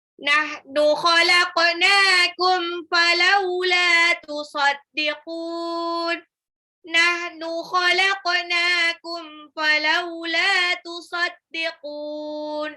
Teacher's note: nunnya di sini matabi'i 2 harokat, falaula, lamnya matabi'i lagi 2 harokat